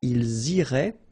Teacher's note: make the liaison as well. You get this S and then a vowel after.